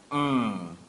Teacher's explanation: we're closing both lips and the air is escaping through the nasal passage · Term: m sound